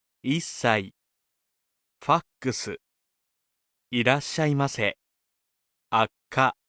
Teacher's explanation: If the same consonant is next to itself, there is a short pause inserted, like a staccato in music.